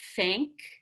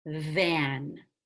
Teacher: voiced th so for the voiced th it's the same thing your tongue gets close to your teeth but you're going to engage and vibrate those vocal cords and it will sound like a buzz